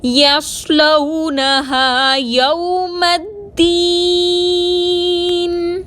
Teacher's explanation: الدین میں یا مدہ کو 2 حرکت کے برابر کھینچ کر پڑھیں گے، نون کو ساکن کر کے وقف کریں گے